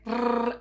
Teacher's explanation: Now the r in Spanish is trilled and this means that we do something like like this in order to do it.